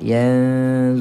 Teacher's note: mad mad asli panjang dua harakat